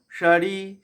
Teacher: সা তালবস সা তালুতে লাগবে